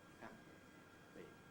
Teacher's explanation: a P sound, like in happy, really is just a momentary silence, because during the hold, you can hear nothing. Happy. So you can see that logically, you must identify it when you hear it by listening to the approach and listening to the release.